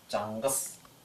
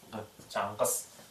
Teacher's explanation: Смыкание происходит глубоко сзади. Глубоко заднеязычная Г. Чангас. Точно так же ее произношение слегка глухое. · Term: задняя взрывная